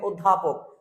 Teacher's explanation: ও এর উচ্চারণটি ও হয়ে যাবে, যে কারণে এটি সংবৃত উচ্চারণ